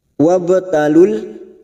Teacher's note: ba sukun qalqalah sugro, karena mati asli di tengah kalimat, jangan lupa dipantulkan